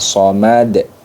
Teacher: Pantulnya itu dikembalikan ke makhrajnya huruf Dal ya pantulkan ke makhrajnya huruf Dal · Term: Qalqalah Kubro, qolah kubro